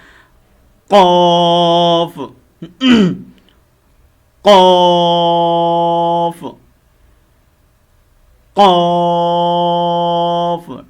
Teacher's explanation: قلقلے والا کاف ہے، اس کو ہم نے خوب پر کرنا ہے